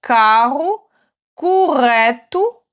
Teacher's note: ça va être un son un petit peu plus fort et il faut bien faire trembler la gorge.